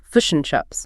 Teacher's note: the I sound often morphs into something closer to a U sound. So fish and chips might sound more like fish and chips.